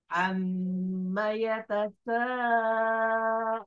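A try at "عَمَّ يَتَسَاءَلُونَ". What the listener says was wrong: Alun, bukan turun, tapi alun. Datar.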